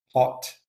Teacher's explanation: Hot with the low back rounded vowel.